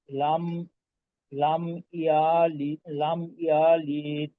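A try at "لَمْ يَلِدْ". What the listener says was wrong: লম্বা হয়ে গেল, আবারও কিন্তু কলকলা ছুটলো। হ্যাঁ, লিদ, এই মাখরাজটা দিতে হবে।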